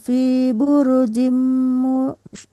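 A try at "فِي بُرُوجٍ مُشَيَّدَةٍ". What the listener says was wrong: Buru panjang ya, Mandek. Fi burujim panjang runya ya.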